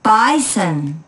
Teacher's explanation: in the word bison the first syllable is stressed